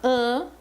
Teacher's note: o som do M não é pronunciado o som que é pronunciado aqui é o som do ã que é um som vocálico único é uma vogal nasal